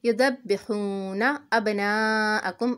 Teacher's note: اب با ساکن ہے، قلقلہ کریں گے۔ ناءکم مد ہے، کھینچیں گے۔